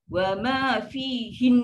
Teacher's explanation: Nun tu yang kita kena maintain dia punya dengung 2 harakat.